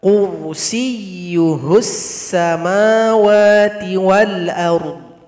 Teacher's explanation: huruf ro dibaca dengan tebal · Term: ra dibaca dengan tebal